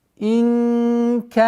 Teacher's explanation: Здесь ихфа в размере двух огласовок, назализация.